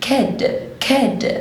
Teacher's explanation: وانا بنطق letter D لساني في الالفيولار ريدج